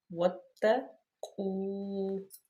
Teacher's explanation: واتقوا یوما لا تجزی، یہاں پہ واو مدہ اور اس کے بالکل الف زائد کے آگے واو لین، کیونکہ واو ساکن ما قبل مضموم تو واو مدہ، واو ساکن ما قبل مفتوح تو واو لین۔ اور واو مدہ آپ کو پتہ ہے لمبا کر کے پڑھا جاتا ہے، اس کو کھڑی حرکت کے برابر لمبا کیا جاتا ہے، اور لین کو نرمی سے صرف پڑھا جاتا ہے، اس کو لمبا نہیں کیا جاتا واو لین کو۔